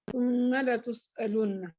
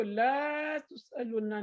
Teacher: لام کے اوپر کیا ہے فتحہ، جسٹ ایک زبر ہے، اس کو اتنا ہی پڑھنا ہے، اس کو لا تسألن نہیں کہا جائے گا